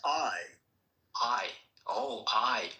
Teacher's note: That's actually two sounds. Ah and E put together real fast. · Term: diphthong